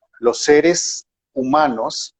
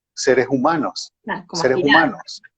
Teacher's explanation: de la boca pero sale en forma de exhalación es decir no se filtra a través de los dientes por lo cual no genera la sonoridad típica de la s y entonces suena como una jota